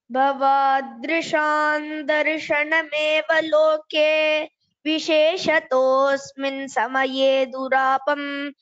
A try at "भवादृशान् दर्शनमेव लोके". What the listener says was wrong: द first letter it's द महाप्राण was not told भवादृशम् otherwise it is correct only.